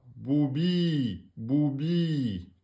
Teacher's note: Donc, il est précédé de la kasra. C'est donc le ya est la prolongation de la kasra. C'est la voyelle longue. Donc là, le ya va se mettre après le bi.